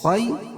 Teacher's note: یا ساکن سے پہلے زبر ہو تو یا لین ہوتا ہے، اس کو نرم آواز کے ساتھ جلدی ادا کریں گے، جیسے خی، اور خا کو پر پڑھیں گے۔